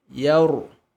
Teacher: Hati-hati ketika ingin menebalkan ro, ya jangan ikut tebal. Ya tetap tipis. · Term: ro tebal